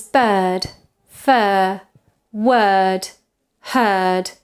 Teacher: this vowel is what you produce when you don't do anything special with your mouth so it's a very neutral position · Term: central vowel, central vowels